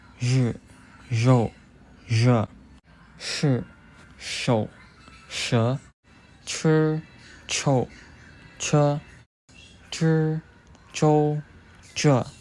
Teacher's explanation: The retroflex sounds zh and sh require curling of the tongue.